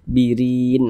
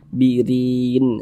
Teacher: huruf ro memiliki tanda baca kasrah ini baris satu ke bawah tanda baca kasrah atau harakat kasrah maka huruf ro dibaca tipis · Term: tarqik